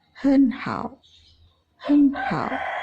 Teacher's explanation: Dua buah suku kata memiliki tun tiga berada secara berurutan, maka tun suku pertama berubah menjadi tun kedua, sedangkan tun pada suku kedua tetap.